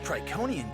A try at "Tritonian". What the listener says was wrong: Tritonian. It's pronounced Tritonian. Tritonian! With a T in the middle.